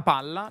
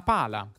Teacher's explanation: In italiano le consonanti doppie, come sapete, si pronunciano effettivamente lunghe o rafforzate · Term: consonanti geminate